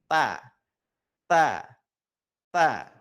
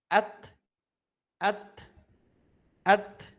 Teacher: Maka saat melafalkan huruf ta itu seperti ada hentakan udara yang keluar. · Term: hams